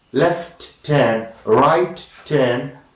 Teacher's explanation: When you say slowly, left turn, right turn, that t of left, last sound of left, and t of turn are audible.